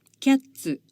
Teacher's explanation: つつつすすす Remember that when we are saying す the tongue does not touch the alveolar ridge, but when we are saying つ it touches the alveolar ridge because the sound starts with a t and ends with a s. As we saw in the instruction video, in order to make the つ sound, you start from cats and add う at the end and make a syllable.